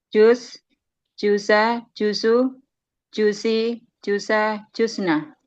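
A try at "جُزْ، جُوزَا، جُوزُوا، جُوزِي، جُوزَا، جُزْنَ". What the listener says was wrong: jimnya dipanjangin ya untuk antuma, antum, anti, antuma. Ya. Coba ulangi.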